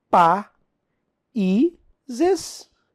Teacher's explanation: I, formando hiato com a sílaba anterior, sozinho. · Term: regra do hiato